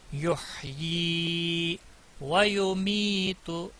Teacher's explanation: حمد یحیی، ناظرین یہاں پر جو یا ہے اس کے نیچے کھڑی زیر ہے، مد اصلی کھڑی زیر ہے یا کے نیچے، اس کو کھینچ کے پڑھنا ہے، اس کی آواز نیچے کو جائے گی